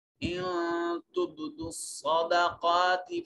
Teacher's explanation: نون ساکن کے بعد تا حرف اخفا ہے، تو یہاں نون کو اپنے مخرج میں چھپائیں گے، اور اس کے بعد با ساکن ہے حروف قلقلہ میں سے، تو یہاں قلقلہ واجب ہوگا۔ صاد حروف مستعلیہ میں سے ہے، موٹا اور پر کر کے مفخم انداز میں پڑھا جائے گا۔